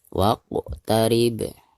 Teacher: Dal sukun sekaligus posisinya ada di tengah-tengah bacaan. Maka dihukumi qalqalah sugro dan dibacanya harus dipantulkan dengan suara pantulan yang tipis.